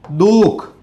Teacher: દાખલા તરીકે અહીંયા દુઃખ શબ્દ છે તો દુઃખ શબ્દમાં આપણે દુહુક શબ્દ બોલતા નથી. દુઃખ શબ્દ વિસર્ગ આવે છે પણ આપણે દુહુક શબ્દ બોલતા નથી